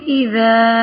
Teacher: اذا جاء، اب دیکھیں اذا، ذال نرم ہے، الف جو ہے وہ نرم سی ادا ہو رہا ہے، خود ہی باریک پڑھا جا رہا ہے